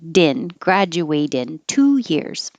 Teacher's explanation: Graduate, and the T will move over to the in and change to a D.